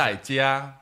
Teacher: the fourth tone is like high, then to low, and then the first tone is high again. So like very up and down, a lot going on, right?